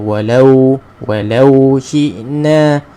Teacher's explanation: Syi'na hamzah ni, jangan jadi ain pula